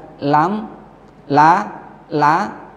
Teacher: Lam condong keluar atau ke ujung lidah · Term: inhiraf